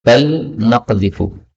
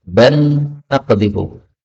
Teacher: lam ketemu nun, bal naqdhifu. Ini boleh idgham menjadi ban naqdhifu.